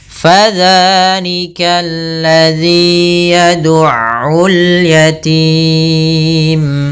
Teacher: Fa tadi kelupaan, yaitu jangan sampai dipantul, jangan sampai pa dengan p, tapi dia fa, aliran nafasnya mengalir